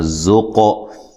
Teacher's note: قاف کو ہلا کر پڑھنا ہے، زا کو زور سے پڑھنا ہے